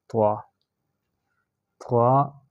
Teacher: آگے ہے طوا، طوا اور طوا کا مخرج ایک ہے، تا اور طوا، لیکن طوا جو ہے وہ موٹی پڑی جاتی ہے ذرا زبان کو گول کر کے